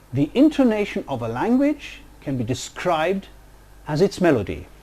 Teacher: this stretch of speech is organized into 3 tone groups